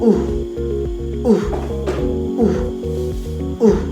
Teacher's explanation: ang letrang u naman ay binibigkas sa harap na gitna